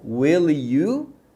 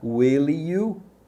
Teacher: o final do will é um final de L, e aí ele emenda com a próxima palavra que começa com um som de vogal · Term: emendam